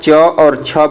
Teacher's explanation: तो जैसे ही आप च और छ बोलोगे तो आपको पता चलेगा कि आपकी जो जीभ है वह तालु से टच कर रही है। तो ऐसे वर्ण जिनको बोलते समय जीभ तालु से टच करे वह वर्ण तालव्य होते हैं